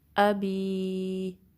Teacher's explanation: یدا، تبت یدا، حمزہ پہ آگے فتحہ ہے، با کی کسرہ کو یا سے ملانا ہے، یا کی 2 کاؤنٹس ہیں۔